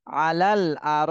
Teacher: আলাল হামজা জবর আ র আলিফ জবর র আর র তাহলে র তে চার আলিফ টান দিতে হবে